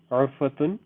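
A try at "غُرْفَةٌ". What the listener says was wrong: Not urfatun. Not ayn. Ghain. You heard ghain. Like you gargling. Ghurfatun.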